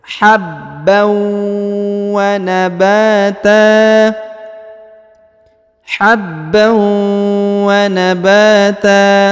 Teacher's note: Habbau wa nabata ya, jadi setelah ditahan dan ditekan pada huruf ba, lalu bertemu dengan huruf ya, tanwinnya ini bertemu dengan waw tasdid, maka ditahan, ditekan dua harokat dan didengungkan. Habbau wa nabata, habban wa nabata ya, jadi ba dipanjangkan dua harokat karena di depannya terdapat alif ya. · jadi ba dipanjangkan dua harokat karena di depannya terdapat alif ya. Huruf tan yang di ujung, karena dia berhenti di sini, maka berubah menjadi ta ya, berubah menjadi fathah dan dihilangkan tannya.